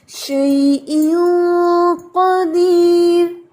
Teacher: قا heavy اور دیر یہ را باریک ہے